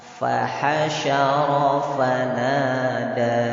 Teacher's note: Di situ yang tebal hanya ra ya, semuanya tipis.